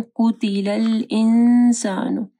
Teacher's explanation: قاف کو موٹا پڑھنا ہے · نون ساکن کے بعد سین ہے، اخفا غنہ ہوگا